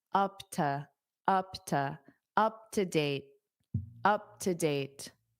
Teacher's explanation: this to will become unstressed because it's a preposition